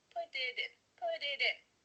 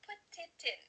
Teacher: Do you see how that makes it much faster? Because instead of spending the time to let the air come out of your mouth, your tongue is just tapping the top of your mouth to make a D